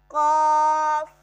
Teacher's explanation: हरूफे लहातिया में हमारे पास दो वर्ड थे, कॉफ, और ये हमारे पास फर्स्ट वाला है कॉफ। कॉफ जुबान की जड़ कव्वे के करीब जब नरम तालू से लगे तो इससे कॉफ अदा होगा